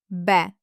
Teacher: It's the voiced counterpart to the letter p. Your lips work exactly the same way, but we activate our vocal chords. The sound should be deep.